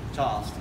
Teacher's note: We don't pronounce the R, we don't pronounce the L, both should be silent. So if you'd like to phonetically spell Charleston, C-H-A-A-A-S-T-O-N.